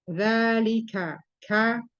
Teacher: mempunyai sifat hamas, tapi syiddah, tidak rohwa. Jadi hamas dan syiddah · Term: huruf kaf